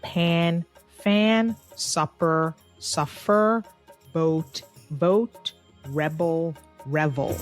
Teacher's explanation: the f sound is usually substituted for the p and the v sound is often substituted for a b